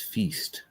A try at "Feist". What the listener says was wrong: Feist, I think is how you pronounce it. Feist.